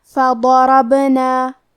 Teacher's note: ہمیں حرف البا کو قلقلہ سے پڑھنا ہے اور قلقلہ کا معنی ہے حرف ساکن کو ہلانا. تو ہم با کو ہلاتے ہوئے یہ کلمہ کو پڑھیں گے.